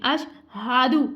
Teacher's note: سینے سے ہم نے ہا کی ادائیگی کرنی ہے, حلق کے نیچے والے حصے سے ادا کرنا ہے